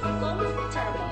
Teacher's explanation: More or less gagawin ng US, UK, at saka Australia ng tatlong syllable. So, tatanggalan ng isang letter dyan.